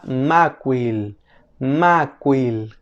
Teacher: la m en fonética se le conoce como una nasal bilabial Sonora